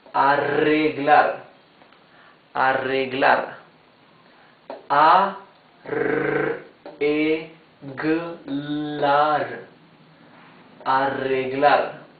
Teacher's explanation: when the R is doubled in the middle of a word, it's the same rough sound as the R at the beginning of the word